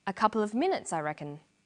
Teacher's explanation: The man answers with a statement. A couple of minutes, I reckon. This takes a falling tone.